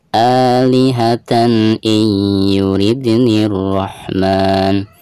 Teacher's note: Di atas tak marbutoh itu ada tanwin fathatain lalu berhadapan dengan hamzah yang merupakan salah satu daripada huruf izhar, maka cara membaca tanwin di sini itu harus dijelaskan ya · Dan di sini ada nun sukun lalu berhadapan dengan huruf ya, dan huruf ya ini termasuk huruf idgham ya, dan termasuk idgham biguna. Maka cara membaca nun sukun tersebut itu harus dimasukkan ke huruf ya disertai dengan guna ya.